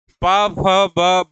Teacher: प, फ, ब कौन सा व्यंजन होता है? ओष्ठ व्यंजन होता है।